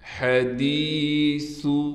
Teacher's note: ہا کو بالکل صاف کر کے گلے سے نکالیں گے، دال کے بعد یا ہونے کی وجہ سے یا حروف مدہ میں سے ہے، اس لیے دال کو ایک الف کی مقدار کھینچیں گے۔